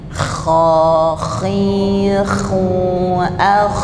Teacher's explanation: kha ini ada angin yang berhembus banyak ya